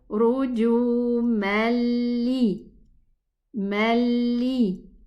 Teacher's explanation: And this is without a ghunna. So we say rujumali, mali, without doing any ghunna. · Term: idgham